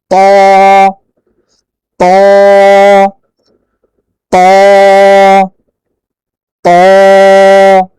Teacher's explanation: জিহ্বার আগা উপরের যে দুই দাঁত এর গোড়ার সঙ্গে লেগেছে। ত ত ত ত। তটা একটু মোটা, এই জন্য আপনার জিহ্বার গোড়াকে উপর দিকে তুলতে হবে, জিহ্বার গোড়াকে উপর দিকে তুলতে হবে।